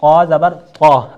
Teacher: طا کو ہم نے طا ہی پڑھنا ہے، تا کی ادائیگی بالکل باریک ہم نے نہیں کرنا ہے